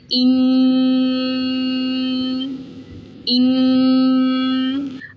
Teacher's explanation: آواز ناک میں گنگناتی ہے